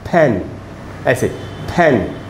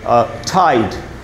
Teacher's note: फी ठी एंड खे जो है, they can also be aspirated. इनको एस्पिरेट भी किया जा सकता है.